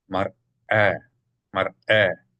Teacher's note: not mare, but mar, break, should be a glottal stop sound from the aleph.